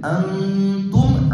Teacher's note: அந்த நூனை அன்னு சொல்லக்கூடாது, மூக்கால மறைச்சு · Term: இக்ஃபா